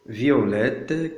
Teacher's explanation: La prononciation de ces deux voyelles en deux syllabes se nomme diérèse.